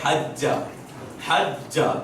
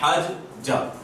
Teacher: حج, حج, تشدید, سختی کے ساتھ پڑھنا ہے. یا اس کو آسان الفاظ میں اگر ہم کہیں گے, وہ ڈیٹیل میں ہے تو اس کو 2 مرتبہ پڑھا جاتا ہے. حج, جا. تشدید اصل میں 2 چیزوں کے مجموعے کا نام ہے, ان دونوں کے مجموعے کا نام ہے.